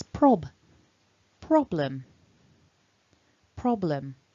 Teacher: So you really want that first syllable to be stronger. So we've got a consonant cluster at the beginning, the pr. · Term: strongest syllable